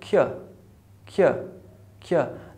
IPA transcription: kjə